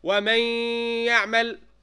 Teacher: Did you hear the noon sakina, or has it disappeared? Disappeared. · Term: idgham